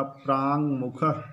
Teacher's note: दूसरे पदारंभ में अनुनासिक वर्ण म है, इसलिए हमारा प्रथम पदांत का वर्ण क भी जो है अनुनासिक में परिवर्तित होगा और हो जाएगा प्रांग मुख।